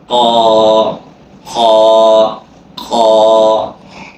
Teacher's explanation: যাচ্ছি কফ জিহ্বার গোড়া তার বড় উপরে তালুর সাথে লাগাইতে হবে অনেক মোটা হরফ এবং কি মুখের ভিতরে সাউন্ডটা মোটা করবেন